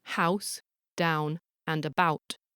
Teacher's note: In my accent, that's an ow sound, but it can be realised as an oo sound, a boot, or an o sound, a boat, in other accents.